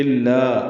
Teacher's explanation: الا، حمزہ کو لام سے ملانا ہے، لا الف مدہ ہے، آگے حمزہ ہے تو لا پہ مد آئے گی، مد منفصل چھوٹی مد ہے